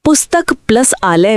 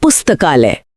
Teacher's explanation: पुस्तक का अंतिम अ और आलय का प्रथम आ मिलकर आ बन गए और शब्द बना पुस्तकालय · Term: दीर्घ संधि